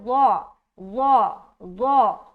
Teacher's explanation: तो के बाद जो हर्फ आता है ज़ो, ज़ो ज़ो, इसको मोटा करके निकालना, ज़ो ज़ो ज़ो, ठीक है।